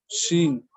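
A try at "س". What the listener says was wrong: সিন না সিন, এটা দন্ত স দিয়ে সিন। হ্যাঁ দন্ত স দিয়ে সিন, একটু বাতাস বের হবে আগে, সিন এরকম, সিন।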